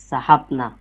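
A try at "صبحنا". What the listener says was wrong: সাহা হয়ে গেল, সাবাহ না বলেন, দ্বিতীয়টা তো বা।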